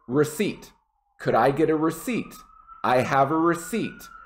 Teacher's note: the p is silent so just get rid of it